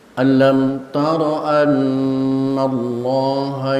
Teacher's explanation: Yang perlu diperhatikan dalam baca di antaranya ada alam taro rnya mohon tidak dipanjangkan. Jangan dipanjangkan jangan dibaca alam taro.